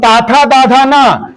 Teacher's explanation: ये दंत से पढ़ा जाता है, दंत स्पर्शी है ना?